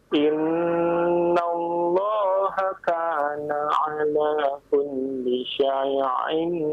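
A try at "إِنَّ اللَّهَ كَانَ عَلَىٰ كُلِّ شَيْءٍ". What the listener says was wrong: Nah, jangan pakai ain. Actionnya sudah pakai ain. Bukan, itu hamzah ya.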